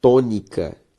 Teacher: perceba que a sílaba tônica é to